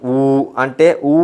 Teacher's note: ఊ అంటే మన పెదాలు రౌండ్గా మారుతాయి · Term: ఓష్టం